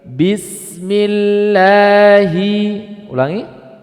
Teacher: sini ada lafzul jalalah yaitu lafaz Allah apabila subiq Bil kasri apabila didahului dengan kasrah maka lafdul jalalah ini menjadi tipis